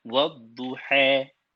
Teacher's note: ada beberapa qiraat yang dia membaca alif maqsurah kat ujung tu di antara alif dengan ya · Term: imalah